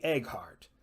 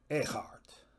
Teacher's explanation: find that GH consonant way in the back of your throat